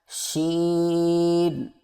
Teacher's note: زبان کے درمیان کو تالو کی طرف بلند کرتے ہوئے باریک اور پھیلتی ہوئی آواز میں پڑھیں